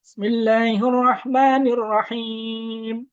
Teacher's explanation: Him itu boleh panjang. 6 harokat ya. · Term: mat arid lisukun